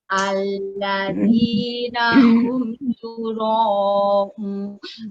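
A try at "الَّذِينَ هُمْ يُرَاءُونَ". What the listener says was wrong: Bukan un. Sanes un bu. Yura'un.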